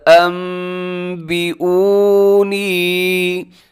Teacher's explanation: نون ساکن اور تنوین کے بعد با آ جائے، تو یہاں پر نون ساکن ہے، اس کے بعد با ہے، تو نون ساکن کو ہم میم کے ساتھ چینج کر دیتے ہیں اور اس تبدیلی کا نام کیا ہے؟ اقلاب